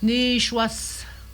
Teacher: Le I ne se prononce pas.